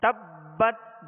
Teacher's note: با پر تشدید ہے, با کو کیسے پڑھیں گے دوہرا پڑھیں گے